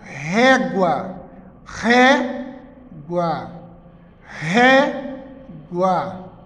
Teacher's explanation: penúltima sílaba mais forte paroxítona